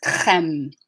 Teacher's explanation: In French, the R's are done at the back of the mouth, the back of the tongue, using the tongue and the soft palate, or the velopharyngeal port is what it's called in linguistics. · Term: back of the tongue R